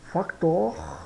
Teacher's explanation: o r bem puxado né no final né Factor ara aqui pode quase pronunciar como um a né